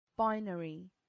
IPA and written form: ˈbaɪnərɪ (binary)